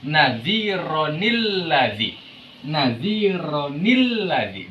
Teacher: Di situ ditambahkan nun, yang namanya juga nun tambahan atau nun ziyadah